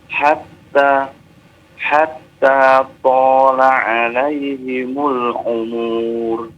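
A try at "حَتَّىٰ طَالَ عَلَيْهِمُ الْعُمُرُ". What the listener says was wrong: Jangan dipanjangkan, Pak. Ya, walaupun kita berharap umur kita panjang, tapi ketika baca tidak dipanjangkan.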